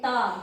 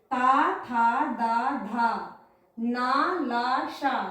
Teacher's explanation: ता दांत हमारी जीभ दांतों को टच कर रही है। ता थ द ध ये जितने वर्ण है इनमें जो हमारी जीभ है वो हमारे दांतों को टच कर रही है। तो इसलिए इन्हें दंत्य व्यंजन बोला जाता है।